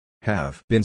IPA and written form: hæv bin (have been)